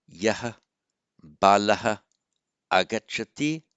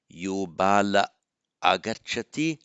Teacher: Remember the ah, short vowel ah, with Visarga followed by any other vowel apart from another short ah. The Visarga simply drops. So Balaha Agachati becomes by Sandhi Bala Agachati.